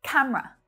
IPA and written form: 'kæm rə (camera)